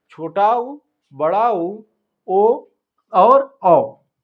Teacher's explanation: इनका उच्चारण करते समय हमारा ओठ जो है वह गोल आकार के में हो जाता है इसीलिए इसको गोलाकार कहते हैं या वृत्ताकार करते कहते हैं तो